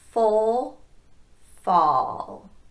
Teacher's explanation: On fall, you'll go to that lowest tongue position like you did for full, but you'll also drop your jaw more. So the difference between full and fall is how much your jaw is dropping.